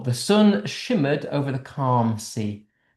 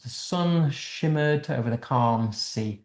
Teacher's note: Notice we've got these sort of sibilent s sounds.